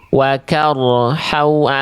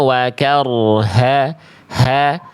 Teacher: pastikan H besar keluar dari pangkal tenggorokan ya. Jangan sampai dia dibaca tidak dari pangkal tenggorokan ya.